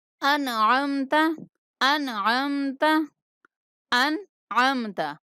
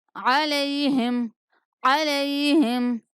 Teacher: حمزہ انتہائی حلق سے نکلتا ہے اور عین وسط حلق سے